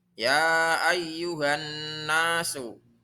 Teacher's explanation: Huruf non kalau kalian lihat itu di atasnya ada harokat tasdid. Maka harus dibaca gunnah. Gunnah artinya mendengung. Cara bacanya mendengung 2 harokat.